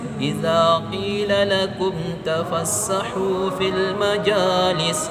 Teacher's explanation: karena mim sukun bertemu dengan huruf ta, maka dia dibaca dengan jelas.